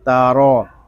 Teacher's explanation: تا زبر تا، را زبر را، تارا، تا بریک اور را کو پر پڑھیں گے۔ را کو پر اس لیے پڑھیں گے کہ را کے اوپر زبر ہے